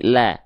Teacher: Bukan dibaca lo, tapi la. Berarti tipis, kecuali pada kondisi-kondisi tertentu, ya.